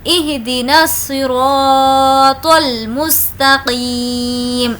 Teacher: الف اور لام دونوں کو اسکپ کرنا ہے، اس لیے ڈائریکٹ نون کو صاد سے ملا کر پڑھ رہے ہیں